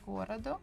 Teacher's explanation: So the second one, O, is unstressed. That's why we pronounce it as A.